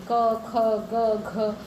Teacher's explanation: आप बोलिए, अगर आप क बोलेंगे, क, ख, ग, घ, तो ये आपके सिर्फ कंठ से आवाज़ निकलेगी, गले से आवाज़ निकलेगी, जीभ हिलेगी भी नहीं, ठीक है।